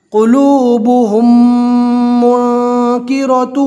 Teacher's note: اب جزم والی میم کے بعد میم آیا ہے تو ملا کر گنہ کے ساتھ پڑھیں گے۔ میم کو میم کے ساتھ نہیں ملانا ہے، یہ ہا کو جو میم سے پہلے پیش والا ہا ہے اس ہا کو میم کے ساتھ ملا کر گنہ کے ساتھ پڑھیں گے۔ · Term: ادغام